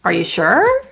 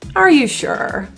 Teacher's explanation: You might have an upward intonation for a question, a yes-no question. Are you sure? Or you might have a downward intonation indicating a statement.